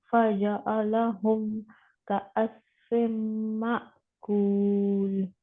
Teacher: حمزہ جھٹکے سے رک جائے گا. حمزہ پچھلے والے زبر زیر پیش کو جب ساکن حالت میں آتا ہے تو جھٹکے سے روک دیتا ہے اور ایسے روکتا ہے کہ سانس اور آواز دونوں رک جاتے ہیں